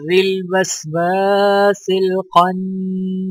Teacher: نون مشدد ہے تو لہٰذا نون پر غنہ کیا جائے گا